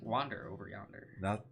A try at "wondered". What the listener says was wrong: That's not an A, that's wander.